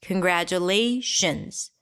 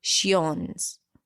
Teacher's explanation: The I-O-N at the end is always reduced to a schwa.